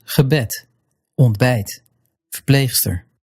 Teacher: you'll stress the second syllable. So here's gebed, ontbijt, verpleegster. All starting with unstressed prefixes.